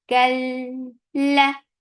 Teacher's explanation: La for fatha open jaws the sound is short. Kal, this is idgham without gunna. You're not keeping the sound in your nose at all.